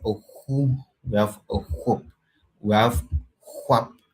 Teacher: the labial form of the h sound